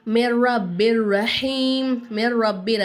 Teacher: ஒரு எழுத்தை இன்னொரு எழுத்தோட ஜாயின் பண்ணி மூக்கால மறைக்காம குன்னா செய்யாம நம்ம இந்த இடத்துல ஓதணும் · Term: இதம் பிலாகுன்னாவோட எழுத்து